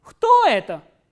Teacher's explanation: So, what happens here is the pitch goes up on the interrogative word and then it comes down towards the end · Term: intonational construction